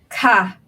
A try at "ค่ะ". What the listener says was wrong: Your pronunciation is quite modern Thai. It sounds like low, but actually this one's supposed to be falling tones a bit. Ka.